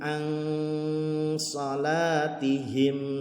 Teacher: Nun mati bertemu dengan sod, maka dibacanya ikhfa. Jadi bunyinya antara bunyi nun mati dan bunyi huruf sod ya.